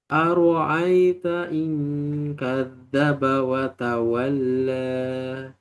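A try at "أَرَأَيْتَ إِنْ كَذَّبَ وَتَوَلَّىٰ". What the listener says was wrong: Bercampur ain ya, hamzah ya. Aro'ai, ai, a, ai, aro'ai.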